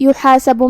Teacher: ہم ہا کو حلق کے درمیان والے حصے سے ادا کریں گے، سین پہ زبر ہے اور با پہ پیش ہے، یہ دونوں حرکات کو ہم ظاہر کریں گے۔